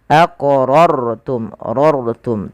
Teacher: artinya rohnya dibaca dengan tebal, tidak dibaca aqrartum, tapi dia aqrartum, rartum, tebalkan sedikit.